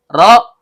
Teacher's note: ujung lidah bertemu dengan langit-langit bagian belakang. Karena ro-nya berharakat dhommah, maka hukum bacaannya tebal atau tafkhim.